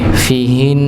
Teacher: Entah di awal maupun di pertengahan. Tapi ketika dia di akhir, ketika waqaf, maka dia tetap didengungkan, tapi tidak dibaca harakatnya.